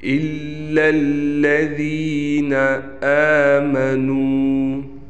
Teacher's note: آمنو میں حروف مدہ آ گیا، واو مدہ، اس کو ایک الف کے برابر کھینچ کر پڑھیں گے۔